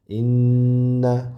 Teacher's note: Inna ushlab turiladi ozroq. Innal insana demak ushlab turamiz inna havo burundan chiqadi. Ozroq g'unna bo'ladi. · Inna havo burundan chiqadi, ozroq g'unna bo'ladi, ya'ni inna.